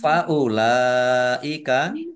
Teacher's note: Faulaika, lam fathah berdiri, mat tobi'i, tetapi karena bertemu dengan huruf hamzah di satu kata, maka menjadi mat wajib muttasil. Dibaca panjang harus 5 harokat.